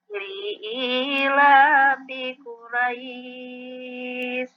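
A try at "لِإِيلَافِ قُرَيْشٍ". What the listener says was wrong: Shinnya jangan dihilangin. Syil. Mudahnya pengucapan seperti itu. Syil. Al-Quraish. Ditekan.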